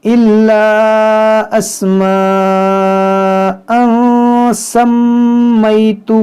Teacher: تنوین کے بعد سین ہے تو یہاں پر اخفا کریں گے، یہاں میم مشدد ہے اس میں غنہ کریں گے